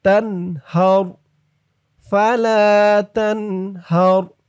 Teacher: হার এরকম বলা যাবে না, কিন্তু বলতে হবে হার তানহার ফালা তানহার। জবর হরকতের পরে র আসছে, তাই রর আওয়াজটা পুর মোটা হবে।